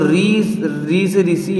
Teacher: इसका उच्चारण करते समय र और ई आएगा मतलब व्यंजन आ रहा है और स्वर भी आ रहे हैं